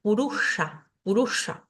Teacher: esta s con un puntito debajo me indica que es un sonido cerebral y que tengo que llevar la lengua hacia arriba para poder pronunciarla